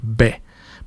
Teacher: la primera es bilabial, estoy juntando los labios